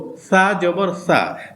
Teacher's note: সা উচ্চারণ করতে হলে যে জিহ্বার মাঝখান দিয়ে বাতাস বের হয়ে যায়।